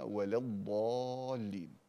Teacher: الإمام الجزري نبه على ترقيق اللام